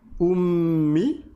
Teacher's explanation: Rappelez-vous la shadda ça veut dire qu'on va rester appuyé sur la consonne 2 fois plus longtemps